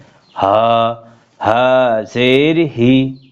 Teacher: বড় হা হলকের শুরু অর্থাৎ গলার শুরু হইতে